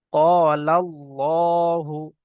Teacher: আল্লাহ শব্দের পূর্বে জবর আসলে পুর করে পড়তে হয়।